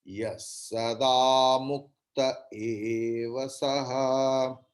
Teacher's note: Then visarga's pronunciation will be like sakara